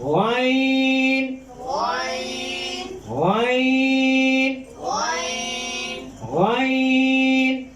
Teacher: اس کا مخرج ہے حلق کے سب سے اوپر والے حصے، جہاں اقصی، ہم کہتے ہیں اقصی حلق۔ غائن غائن غائن غائن غائن، غائن جب آپ اس کو نکالیں گے تو آپ کی جو حلق ہے نا آگے پیچھے ہوگا۔